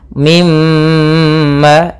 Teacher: ketika ada mim bertasydid suara atau suara ghunahnya ditahan mim ma dua harakat